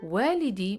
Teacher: you have to pronounce the long vowel here to avoid saying my son if you don't pronounce the alif by making wow long saying